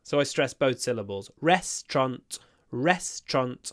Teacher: I pronounce it with a double stress. So I stress both syllables.